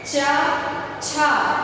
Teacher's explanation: जैसे च को स्पर्श करते समय हमारी जीवा जो है वो तालु को स्पर्श कर रही है।